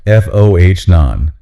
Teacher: A long O at the start and a shorter O at the end.